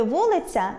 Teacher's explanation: у слові “вулиця” я позначає звук [а] і впливає на м’якість попереднього приголосного